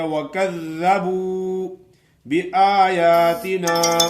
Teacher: اوپر والے دانتوں کے نوکوں پہ زبان کی نوک لگائیں تو زال ادا ہوتی ہے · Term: زال کا مخرج